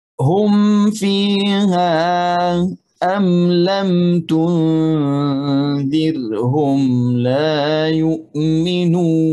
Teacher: Jadi di sini mim jelas tanpa gunnah sebab sukun. Gunnah ada tetapi tidak jelas seperti gunnah yang 2 harakat itu kalau mim tasydid. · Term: izhar syafawi